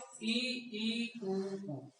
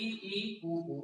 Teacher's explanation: स्वर उच्चारण में सबसे कम मुख खुलता है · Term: संवृत स्वर